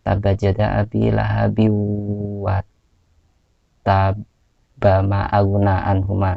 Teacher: Tidak diberhentikan, maka tidak termasuk qalqalah ya.